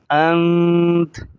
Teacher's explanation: تا پر زبر ہے تو وقف کی صورت میں زبر کو ظاہر نہیں کریں گے، یہ ہو جائے گا انت، اور یہاں نون پر جزم لگا ہوا ہے، یہ دال کی چھوٹے دال کی طرح، تو یہاں پر ہم غنہ کریں گے۔